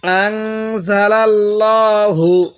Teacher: এই লামের মধ্যে আমরা মোটা করে পড়ব, কারণ আল্লাহ শব্দের লামের পূর্বে জবর থাকার কারণে লামটি মোটা করে পড়ব।